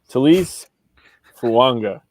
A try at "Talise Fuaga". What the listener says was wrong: No N, just Fuaga. You're close.